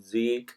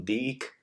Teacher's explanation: Almost now, the all zal sounds are pronounced as dal sounds in the Hijazi.